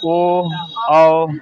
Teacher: कंठ और ओष्ठ दोनों इसमें से इस्तेमाल होंगे